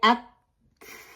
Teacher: the sound is cut and the breath runs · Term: ہمس